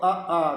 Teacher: अ आ की जो ध्वनि है व हमारे कंठ से निकलती है इसलिए इनका नाम कंठ दिया गया है कंठ के बाद दूसरा